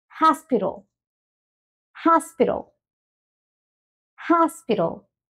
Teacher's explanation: la H la pasamos a una J tenemos la entonación al principio y toda esta parte aquí que normalmente lo decimos como pitol · en el inglés la t suena como una r pero no una r castellana